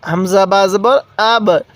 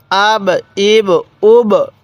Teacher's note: একটু কলকলা করে পড়বো অর্থাৎ ধাক্কা দিয়ে পড়বো